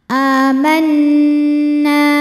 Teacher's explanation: Nunnya hukumnya gunnah musyaddadah karena nun bertasydid. Cara bacanya dengung, jadi bunyi n tahan.